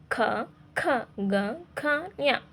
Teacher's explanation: ಈ ಅಕ್ಷರಗಳು ಕಂಠದ ಸಹಾಯದಿಂದ ಹುಟ್ಟುವುದರಿಂದ ಇವುಗಳನ್ನ ನಾವು ಕಂಠ್ಯ ಅಕ್ಷರಗಳು ಅಂತ ಹೇಳಿ ಕರೀತಾ ಹೋಗ್ತೀವಿ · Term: ಕಂಠ್ಯಾಕ್ಷರಗಳು